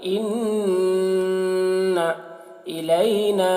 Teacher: اِنَّا نون مشدد ہے تو غنہ کریں گے ، اِنَّ إِلَيْنَا، نون میں مد ہے زیادہ کھینچیں گے، إِلَيْنَا